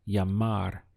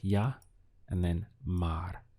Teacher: This double L always gets pronounced as a Y in Spanish. So you can imagine whenever you see this, that it's like this with a Y.